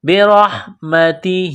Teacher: را کو ہا کے ساتھ ملانا ہے، را کو موٹا کرنا ہے